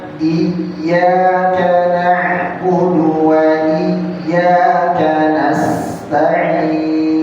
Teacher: Momentum masuknya hamzah ke ya, jadi jangan sampai hamzahnya kepanjangan.